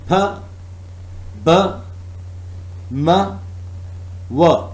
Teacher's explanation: The first is bilabial. Upper lip and lower lip are working.